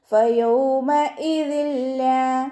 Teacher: തെൻവീനിന് ശേഷം ഇദ്ഗാം ബിലാഗുനയുടെ അക്ഷരമായിട്ടുള്ള ലാമ് വന്നു. തെൻവീനിനെ ലാമിലേക്ക് ലയിപ്പിച്ചിട്ട് ഒണ്ണയില്ലാതെ ലയിപ്പിച്ചിട്ട് ഓതി കൊടുക്കുക കേട്ടോ.